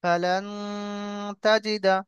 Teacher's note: এই নুন সাকিনকে একালি পরিমাণ গুণনা করে পড়বো